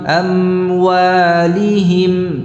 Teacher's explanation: Dan membaca idhar itu tanpa saktah ya. Jadi tidak ada jedanya